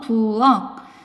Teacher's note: 부엌 아니잖아. 키읔은 기역으로 바뀌어서 발음 나죠.